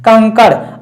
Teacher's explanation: कंकर में जो अनुस्वार लगा है ऊपर उसका उच्चारण जो है नाक से हो जाता है